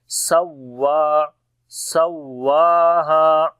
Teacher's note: ونفس وما، میم کو لمبا کریں گے، الف مدہ ہے، تو واو کے اوپر شد ہے، اس وجہ سے یہاں پر نبر کریں گے، یعنی آواز کو بلند کریں گے باقی حروف کی نسبت